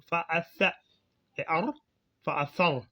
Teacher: C'est le sa, donc quand on le lit on met la langue à l'extrémité des incisives supérieures. Donc on met la langue sous les incisives supérieures. On ressort un peu la langue en soufflant un peu.